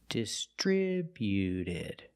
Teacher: When we add ed, the T at the end is between vowels, so it's a fast D. Not distributed, but distributed. · Put the stress on the second syllable only.